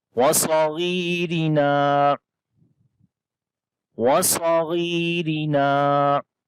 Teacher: صاد کو بھی موٹا پڑھیں گے، غین کو بھی موٹا پڑھیں گے، یہاں پر غین کو لمبا بھی کریں گے، یا مدہ ہے، یا کے اوپر جزم ہے، اس سے پہلے زیر ہے، اور را کو باریک پڑھیں گے، را کے نیچے زیر ہے، نون کو لمبا کریں گے، یہاں پر الف مدہ ہے۔